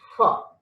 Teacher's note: lower lip and upper teeth are used. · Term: Labio-dental